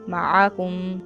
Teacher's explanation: عین کو ادا کرنا ہے، عین کی آواز نکالنی ہے حلق سے